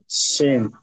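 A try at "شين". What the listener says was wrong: আচ্ছা, নিশ্চয়ই বুঝতে পারছেন, কোরআনে আমরা পড়ার সময় দুরকম হরফ পাচ্ছি, মানে দুটো দুরকমই উচ্চারণ হবে, একই উচ্চারণ হবে না, চেষ্টা করবেন। এটা সিন, এটা শিন।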